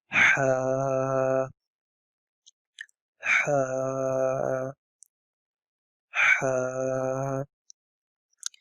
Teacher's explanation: It is an H sound, like H for hen, but it is something that comes from your throat, the middle part of your throat.